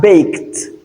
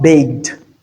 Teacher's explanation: So that is why this sound you change automatically after a voiceless sound. You don't realize the e d as d rather you realize it as t because t is voiceless just like that's why we have baked and not baked.